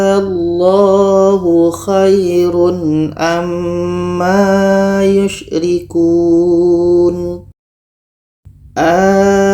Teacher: Kita panjangkan 6 harkat baru masuk ke huruf yang ada tasydidnya. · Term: mak farqu